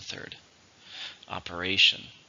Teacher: How many syllables are in operation? 4, stress on the third,